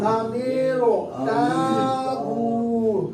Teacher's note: حمزہ زبر آ، میم را زیر میرو، امیرو، تا الف زبر تا، الف کو ایک الف کھینچا جا رہا ہے، کیوں کہ الف مدہ ہے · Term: مد اصلی